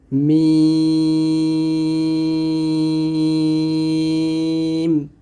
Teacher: দুই ঠোঁটের শুকনা জায়গা হতে মিম উচ্চারণ করতে হবে শক্তভাবে